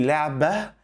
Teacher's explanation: while speaking, we do not pronounce the ta, we pronounce a ha sound. So we say لعبة instead of saying لعبت.